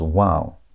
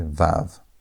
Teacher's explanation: In biblical Hebrew, the original sound was most likely a W. And over time, especially in later Hebrew and in modern Hebrew, that sound shifted into a V sound. That's why many scholars today pronounce it as wow. · many scholars today pronounce it as wow, but modern Israelis say vav